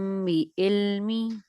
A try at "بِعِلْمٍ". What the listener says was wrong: نہیں یہ آئین پڑھیں.